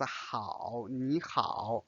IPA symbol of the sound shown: hǎo